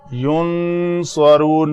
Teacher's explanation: نون کے بعد صاد ہے تو یہاں پہ اخفاء ہوگا